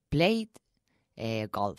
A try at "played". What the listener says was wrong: Played. There's a D, but not an extra syllable. But not played. Played. You have to force that D sound into the same syllable. Played. Played.